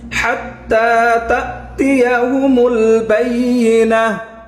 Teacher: হা হরফটা কোথা থেকে উচ্চারণ হবে? গলার মাঝখান থেকে, হলকের মধ্যখান থেকে